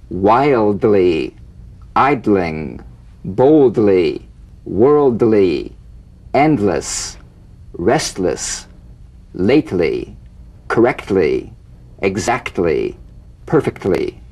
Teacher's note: feel the D or T click even when the L is not sustained because a vowel follows. The medial DL, TL.